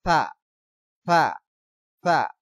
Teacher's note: থা থা এক আলিফ পরিমাণ লম্বা করে পাতলা আওয়াজ করে পড়তে হবে।